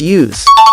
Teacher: If you're referring to the verb, use, like, use this, pronounce it with a Z at the end, hence use.